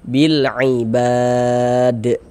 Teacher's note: Sehingga huruf lamnya dibaca izhar, dibaca jelas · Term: alif lam qamariyah